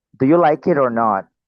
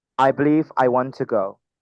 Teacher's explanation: intonasi naik untuk pertanyaan dan turun untuk pernyataan